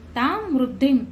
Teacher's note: दी वर अनुस्वार आहे त्याचा उच्चार म करायचा आहे